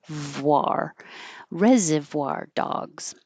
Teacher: Reservoir. So I'm making a V, but I'm also rounding my lips.